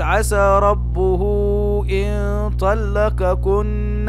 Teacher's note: هنا الهاء جاء بعدها الألف، فنقول هذا مد صلة